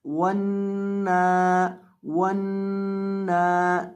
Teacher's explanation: वाव ज़बर नून वन, नून खड़ी ज़बर ना वन ना वन ना, नून के ऊपर हमने गुन्ना करना है, यानी इसकी आवाज़ को नाक में गुनगुना कर पढ़ने को गुन्ना कहते हैं। नून की आवाज़ को नाक के बांसे में पढ़ना ये गुन्ना कहलाता है।